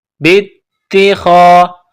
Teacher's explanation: با کو تا کے ساتھ ملانا ہے، الف کو نہیں پڑھیں گے